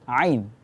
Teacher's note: ain itu makhrajnya adalah tengah lidah, tengah tenggorokan